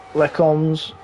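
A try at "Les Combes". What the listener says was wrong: You don't pronounce the S at the end. It's Lecombe.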